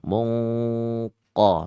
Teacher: Karena memang qaf ini dituntut untuk bacaannya isti'la dan tafkhim, tebal kan begitu ya. Bacanya tebal.